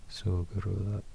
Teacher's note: More close to a D letter instead of a T letter, so it's Sugrudar. Yeah, and the K is softer as well, so it's more like a G than a K.